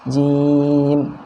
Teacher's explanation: huruf jim di sana panjangnya 2, 4 atau 6 harokat karena mad arid dan sukun